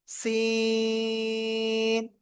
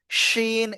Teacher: সিন। চার আলিফ টেনে পড়তে হবে চিকুন আওয়াজে